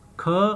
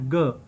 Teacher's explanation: जैसे मैंने आपको पहले बताया है कि ये पिछले हिस्से से, जो ज़बान का पिछला हिस्सा है, ये गले के ऊपर वाले हिस्से से टकराएगा, वहाँ पे हवा का ब्लॉकेज पैदा होगा और फिर सडन रिलीज होगा, तो ये साउंड प्रोड्यूस होगा ख एंड ग। ख जो है वो वॉइसलेस है, एस्पायरेटेड है, और जो ग है वो वॉइस्ड है। जब ग बोलते हैं तो गले में वाइब्रेशन पैदा होती है, इनको वेलर्स कहते हैं।